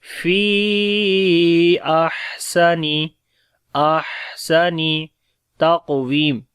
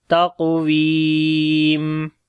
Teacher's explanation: قاف کو موٹا پڑھیں گے، قلقلہ بھی کریں گے، واو کو لمبا کریں گے، یا مدہ ہے